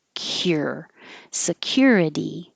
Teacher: this CU is really a k y